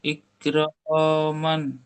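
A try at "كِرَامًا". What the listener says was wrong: ইক হয়ে যাচ্ছে, ইক হবে না। কাবজের কি, কিটা ভুললে হবে না, কি র আলিফ জাবার র। তাহলে কি র, কি র, ইক আসবে না। মান, মিম দু জাবার মান। হ্যাঁ, কি র মান। রটা কেন টান হচ্ছে, রটা কেন টান হচ্ছে, রটা কেন টান হচ্ছে এটা বলেন। আলিফ মাদ্দা রয়েছে, আলিফ মাদ্দা রয়েছে।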